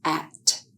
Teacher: the sound is made with an open mouth. The tongue is in a low front position in the mouth